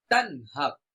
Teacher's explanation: নুন সাকিনের পরে হা আসছে, এই জন্য আমরা গুণনা ছাড়া স্পষ্ট করব